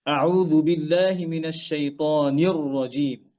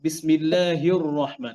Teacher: রটাকে এখানে মোটা করব। নির র সামটাইমস হেভি হয়, সামটাইমস লাইট হয়। তো এখানে কি হবে? হেভি হবে।